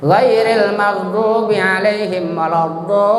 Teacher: Panjangnya maksimal harus 6 harakat. Tidak boleh kurang, tidak boleh lebih. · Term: mad lazim musaqal kilmi